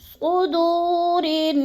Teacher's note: را کو نون مشدد کے ساتھ ملا کر غنہ کرنا ہے، یعنی ایک الف کے برابر لمبا کر کے پڑھنا ہے غنہ کو